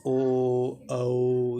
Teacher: कंठ से निकल रही हैं, और आपका होठों का भी प्रयोग हो रहा है। ओ औ यानी ये हो जाएंगे आपकी कंठोष्ठीय ध्वनियाँ, ठीक है, यानी कंठ प्लस ओष्ठ, यानी कंठ और भैया आपके होठों का तालमेल हो रहा है, ठीक है ना, ओष्ठ, ओष्ठ हो जाएगा, कंठ प्लस ओष्ठ, ठीक है ना।